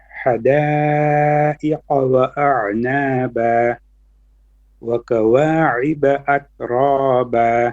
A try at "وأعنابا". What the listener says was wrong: So when you say وأعنابا, your ain also needs to be flat. وأعنابا.